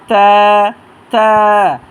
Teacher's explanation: জিহ্বার আগা সামনে দুই দাঁতের ঘোড়ার সাথে লাগাইয়া এক আলিফ টেনে পড়বেন